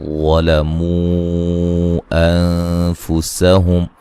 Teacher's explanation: انفسہم نون ساکن کا باریک اخفا ہے